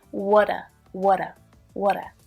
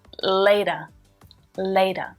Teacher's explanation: can you hear that flap t there it sounds more like a d